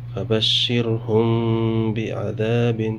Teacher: میم ساکن اس کے بعد با آ رہا ہے، یہاں پہ بھی اخفاء شفوی ہوگا، یعنی غنہ کے ساتھ اخفا کریں گے کیونکہ میم ساکن کے بعد با آ رہا ہے.